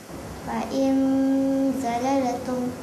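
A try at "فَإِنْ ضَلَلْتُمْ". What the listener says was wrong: Tapi dia sebut zalal tu terlepas. Zalalatum, zalala. Ada le pula. Matikan. Fa'in zalaltum.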